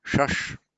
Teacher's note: one of the very few words in Sanskrit that begins with the retroflex sh